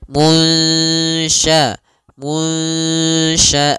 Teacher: Nah, caranya adalah kita samarkan nunnya kepada huruf syin